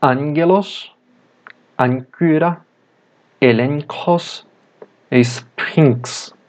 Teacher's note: o gama diante de gamma, kappa, ki ou xi, que são consoantes guturais, tem som nasalizado.